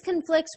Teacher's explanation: when you stress the second syllable in the verb you must destress the first syllable down to a schwa